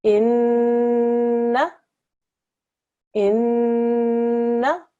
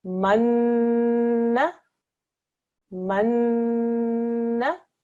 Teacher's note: It's a noon mushaddad. So we join just like any other mushaddad letter, but when we press down, we also make a ghunna sound for 2 seconds.